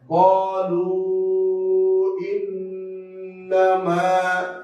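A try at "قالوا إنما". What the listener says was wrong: কলু, ইন্নামা, কলু, ইন্নামা, কলু, ইন্নামা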